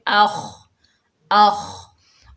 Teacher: اور خا کے اوپر جزم ہے، جزم والا حرف ہمیشہ ایک مرتبہ پڑھا جاتا ہے اپنے سے پچھلے متحرک حرف سے مل کر۔ خا جو ہے خصہ ضغط قز میں سے ہے، یعنی موٹے حروف میں سے ہے، فل ماؤتھ لیٹر ہے۔ خا کو موٹا ادا کریں گے، اخ اخ، اور وقف کی حالت میں ہا جو ہے یہ ساکن ہو جائے گی، اخلدہ اخلدہ۔